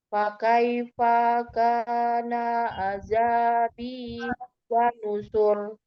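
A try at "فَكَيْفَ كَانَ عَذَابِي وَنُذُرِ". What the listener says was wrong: Fa-nya langsung disambung ke ka. Fakai fakana azabi wa nuzur. Jadi jangan dilihat pemenggalannya ya. Karena fakaifa misah dari kana, misah.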